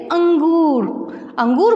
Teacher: अनुश्वर का उच्चारण नाक से होता है